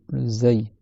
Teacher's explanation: C'est une lettre qui siffle, le zay. C'est un sifflement léger, mais ça siffle quand même.